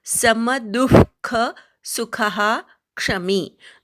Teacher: सुखहाचा पूर्ण उच्चार करायचा, विसर्गाचा पूर्ण उच्चार. क्षमी विसर्गाच्या पुढे क्ष आला की विसर्गाचा पूर्ण उच्चार करतात, त्यामुळे सुखहा असा उच्चार करायचा